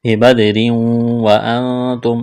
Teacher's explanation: اخفا کریں گے، نون ساکن کے بعد تا ہے